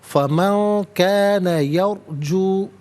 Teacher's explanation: را ساکن کو پر کر کے پڑھا جائے گا